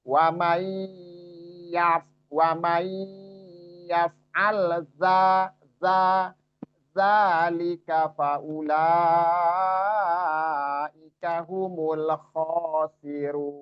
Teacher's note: za ini beda dengan zo, jangan arahin ke zo. Ini misalnya tadi ya'mal zo, tapi za tipis sifatnya istifal.